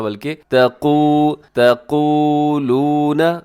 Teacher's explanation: تقو میں قاف کو اپنے موٹا رکھنا ہے، اس کو باریک نہیں کرنا، تقو نہیں پڑھنا بلکہ تقولون۔